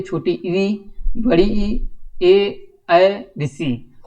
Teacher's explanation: जो जीभ का आगे का हिस्सा है वो क्या होता है? दांतों को छूता है